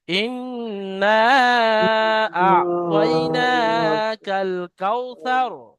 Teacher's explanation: এটা তাড়াতাড়ি পড়তে হবে, সার বলে টান দেওয়া যাবে না